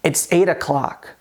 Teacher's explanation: O que eu fiz aqui foi unir 8 com o'clock. E aí é como se eu apagasse o som de O e soa como it's 8 o'clock. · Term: fusão entre as palavras